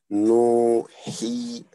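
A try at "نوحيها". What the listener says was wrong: Yeah, elongate he a little bit more. Nuhiha. Say, like, when only a dhamma, you will say no. You will quickly say no, no. But there's a vowel, okay. You say no. No, he, ha.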